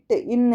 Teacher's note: இட்டு இன்னுன்னா நாக்கோட நுனி பகுதிக்குல தான் நம்ம அந்த அழுத்தம் கொடுத்து சொல்வோம் · இப்போ நாக்கோட நுனி, இட்டு இன்னுன்னா நாக்கோட நுனி பகுதிக்குள்ள தான் நம்ம அந்த அழுத்தம் கொடுத்து சொல்லுவோம், இட்டு, இன்னு அப்படின்னு சொல்லிட்டு. அப்போ நாவின் நுனி அன்னத்தின் நுனி பகுதியை பொருந்துவதால் பிறக்கின்றன